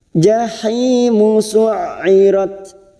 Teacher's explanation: Jahi ada kasrah bertemu ya sukun 2 harokat, kita panjangkan